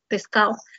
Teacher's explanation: La elisión de la consonante oclusiva dental sonora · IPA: [ d ]